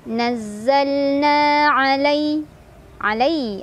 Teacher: ada harf lin karena ada ya sukun sebelumnya fathah, dibacanya dilunakan